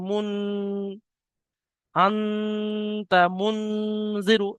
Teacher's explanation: নুন সাকিনের আওয়াজকে নাকে তুলে একালি পরিমাণ গুণনা করে পড়তে হবে, একে ইকফা বলা হয়। যেমন মুন, আনতা মুনজিরু, এই আওয়াজটা যে নাকের মধ্যে কিছুক্ষণ ধরে রাখা হচ্ছে, এর নাম গুণনা। · এই আওয়াজটা যে নাকের মধ্যে কিছুক্ষণ ধরে রাখা হচ্ছে, এর নাম গুণনা। একালিপ পরিমাণ করতে হবে, ধরে রাখার পরিমাণটা একালিপ পরিমাণ।